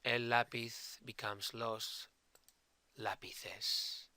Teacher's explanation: my accent was on the second to the last syllable and not on the last syllable, not on pith, but instead in la.